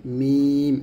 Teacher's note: মিমটা দুই ঠোঁটের শুকনো অংশে মিলিয়ে মিম উচ্চারণ করতে হবে